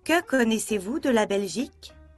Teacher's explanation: La question avec un mot interrogatif commence tout en haut, au 4e étage. Le mot interrogatif se place au 4e étage.